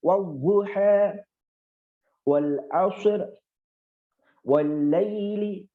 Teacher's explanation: antara mencucunya waw dengan mencucunya harokat zuma u itu lebih mencucu waw. Jadi wadzuha wal asr wal laili.